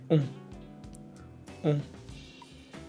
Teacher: Here is another nasal sound you hear constantly in French. The combination ON produces a rounded nasal vowel.